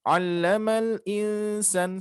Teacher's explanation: nun mati bertemu sin ikhfa ditahan